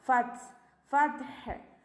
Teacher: Half സുക്കൂന് കൊടുക്കുക. ഫത്ത് കുറച്ച് air pass ചെയ്യണം. നമ്മുടെ പല്ലിൻ്റെ ഇടയിലൂടെ കുറച്ച് എയർ പുറത്തേക്ക് പോവുക. ഫത്ത് ഫത്ഹ്.